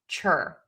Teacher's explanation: you're going to touch the tip of the tongue to the back of the top front teeth where you say a t to start that ch sound